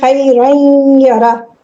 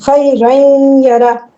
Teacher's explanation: عین نون ساکن کے بعد یا ہے تو عین، یعنی نون ساکن کو یا میں مرج کر دینا ہے غنہ کے ساتھ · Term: ادغام